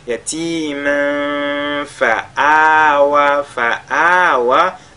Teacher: Tanwin suivi de la lettre fa, on fait al-ikhfa. Et en lisant déjà yatiman fa, on se positionne sur la lettre fa qui suit.